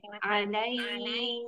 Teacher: alaihnya panjang empat harokat, jadi matlin.